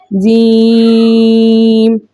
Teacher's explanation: جیم کا مخرج کیا تھا، ان کا جو درمیانی حصہ ہے نا، جسے ہم شجر اللسان کہتے ہیں، جو اوپر تالو کے درمیان سے لگے تو 3 حرف جیم، شین اور یا ادا ہوتے ہیں، ٹھیک ہے نا۔ اب جیم کس کے ساتھ آیا ہے، بڑی مد کے ساتھ آیا، تو ہم نے اس کو 5 الف کی مقدار کھینچ کر پڑھنا ہے